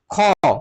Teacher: হচ্ছে অঘোষ বর্ণের অল্পপ্রাণ অল্পপ্রাণ বর্ণ অঘোষ বর্ণের ভাগের মধ্যে খ এটা হচ্ছে মহাপ্রাণ বর্ণ মহাপ্রাণ অঘোষ বর্ণের মহাপ্রাণ ভাগের মধ্যে পড়েছে